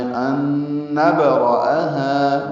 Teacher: نون ساکن کے بعد نون آنے کی وجہ سے ادغام ہے، یہ ادغام مع الغنہ ہے · را پر حمزہ اقصی حلق سے بالجہر ادا کریں گے